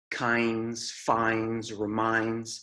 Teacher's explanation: in American English words that end with NDS such as kinds finds reminds Americans often swallow the D sound